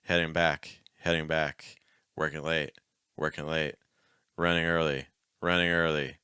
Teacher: like where it's not really an n a full end is it's not really an NG it's a lot lighter